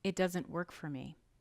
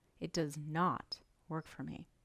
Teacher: we stress the negative word itself